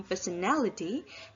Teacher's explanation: If it's added a suffix ality and become personality, the stress moves from the first syllable to the third syllable, which means that the suffix ality makes the stress moves from the stem to the affix.